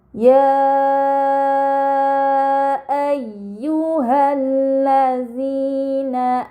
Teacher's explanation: pada kata ya ayyuha terdapat mad bertemu hamzah bukan dalam satu kata ini dinamakan mad munfasil maka harus dibaca panjang selama empat atau lima harakat